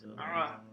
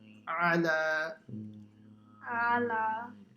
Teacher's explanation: So the ayn is pronounced from the middle of the throat.